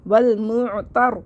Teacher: را مشدد ہے اس سے پہلے زبر ہے تو اس لیے را کو موٹا پڑھیں گے